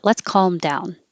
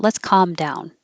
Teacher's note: make sure you're using the vowel ah and not uh because it will sound like come down instead of calm down